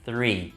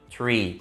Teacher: O mesmo acontece com o número 3 em inglês, que tem o TH também, que seria three, exatamente dessa maneira. Mas se você não colocar a língua no meio dos dentes, o que vai acontecer? Você vai acabar falando tree